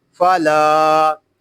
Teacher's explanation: یہاں لام کو ہم ایک الف تک کھینچ کر پڑھیں گے کیونکہ یہاں پہ الف مدہ ہو رہا ہے، فلا، تا نون